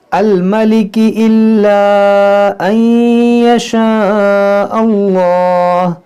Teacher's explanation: یہاں پر ادغام کریں گے، نون ساکن کے بعد یا ہے · جلالت سے پہلے زبر ہے تو اس کو موٹا کریں گے